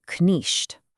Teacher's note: It was this guttural sound from the back of your throat, kind of like the ch in the German name Bach.